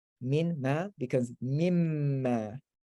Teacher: Or if it merges, the noon also merges into the meme